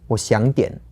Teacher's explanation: I actually ask myself exactly that, because I think I tend to say 我想点. So that's like half a third tone, a second tone, and then a third tone again.